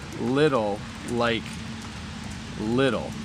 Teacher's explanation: we don't say the T sound in little it's actually more like we say little like little okay I'll